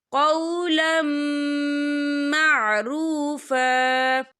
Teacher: تو یہاں پر ادغام ہوگا، تو ہم اسے غنّے کے ساتھ پڑھیں گے۔